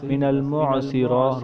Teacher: را کے اوپر کھڑا زبر ہے، اس کو ہم ایک الف کی لمبا کریں گے، تا کو ہم کھینچیں گے نہیں، نیچے زیر ہے۔